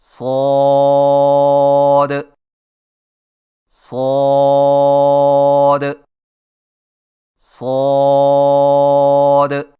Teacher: صاد کی ادائیگی میں زبان کی نوک کو ثنایا سفلی کے کناروں سے مضبوطی سے لگا کر اور زبان کے پچھلے حصے کو تالو کی طرف بلند کرتے ہوئے موٹی اور سیٹی جیسی آواز میں پڑھیں